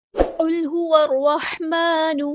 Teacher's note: क़ाफ़ हमारा हेवी letter पूरा अदा करेंगे, लाम साकिन को हिलाएँगे नहीं